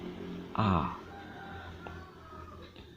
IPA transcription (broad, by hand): æ